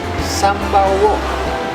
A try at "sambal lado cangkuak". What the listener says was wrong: Enggak. ini bukan sambal uwo. Sambal cangkuak, sambal lado cangkuak.